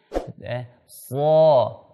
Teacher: Falso, fa tipis, shad tebal. Shad angkat pangkal lidahnya, kemudian rahangnya itbaq, merapat sedikit.